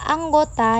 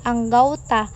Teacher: Perubahan bunyi ini terjadi pada bunyi vokal tunggal O ke vokal rangkap AU. Hal ini terjadi karena adanya upaya analogi penutur dalam rangka pemurnian bunyi pada kata tersebut. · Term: diftonisasi, diftongisasi